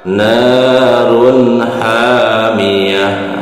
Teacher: Tak marbutoh apabila disukunkan berubah menjadi huruf ha.